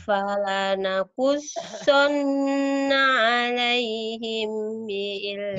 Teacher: Mim mati ketemu ba, ditahan. Alaihim. Kayak bilang ember, tapi bineng ember.